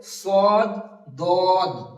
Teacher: তো দুই দাঁতের এই কিনারা বা মাড়ির সাইড, মাড়ির সাইডের সঙ্গে লাগিয়ে জিভের কিনারাটা লাগিয়ে উচ্চারণ হবে